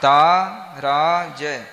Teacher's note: ता की दो मात्रा रा की दो मात्रा और ज की एक मात्रा